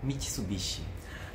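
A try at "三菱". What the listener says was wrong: これは quase parecido, só que ficaria Mitsubishi. Então, português tem a tendência de falar mais alto a penúltima sílaba, né? nihongo é tudo igual. Mitsubishi.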